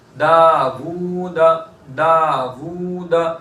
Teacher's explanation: دال کو جتنا کھینچیں گے واو کو بھی اتنا ہی کھینچیں گے، دال کو ایک الف کے برابر کھینچیں گے، واو کو بھی ایک الف کے برابر کھینچیں گے، دال کو ایک الف کے برابر کیوں کھینچیں گے؟